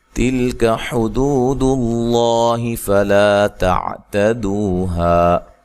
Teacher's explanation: لام کو ہلانا نہیں ہے، کاف کو باریک پڑھنا ہے